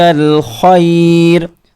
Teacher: الْخَيْرَ، عَلَيْكَ عین حلق کے بیچ والے حصے سے، خیر خا حلق کے بالکل آخری حصے سے